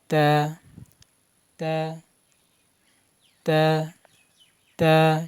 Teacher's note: জিহ্বার আগা সামনের উপরে দুই দাঁতের গোড়ার সাথে লেগে উচ্চারণ করতে হবে তা।